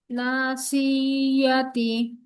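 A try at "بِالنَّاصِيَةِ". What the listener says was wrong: সিয়া এভাবে বলবেন না, না, নরমালি নাসিয়াতি। সি বলে টান দিবেন না আপু। নার মধ্যে শুধু একমাত্র টান হবে, আর প্রত্যেকটা হরফে কোথাও টান নাই।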